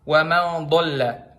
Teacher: Nah, pangkal lidahnya keangkat. Kedengeran kan bunyinya tebel, berat.